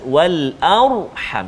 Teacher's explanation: ra yang sukun, ra tu sebelum dia hamzah baris atas, wal arham, jadi ra tu bunyi tebal